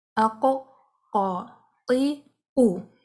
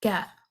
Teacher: قاف ہیوی ہے، کیف لائٹ ہے